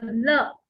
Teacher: र, एक जीभ जो है वो ऊपर पैलेट को हिट करती है, देन र। और ल, जीभ जो है ऊपर दांतों को टच करती है और उसके बाद सेपरेट हो जाती है